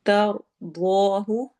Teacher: تر میں رو کو موٹا پڑھنا ہے، ضاد کو بھی موٹا کرنا ہے. ہونٹ گول ہوں گے.